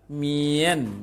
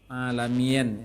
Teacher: sempurnakan sampai akhir matnya kasroh. Bunyi kasroh. Jangan berubah menjadi imalah. Imalah tuh bunyi e.